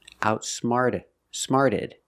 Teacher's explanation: Outsmart in the past, outsmarted. The T changes to a fast D sound.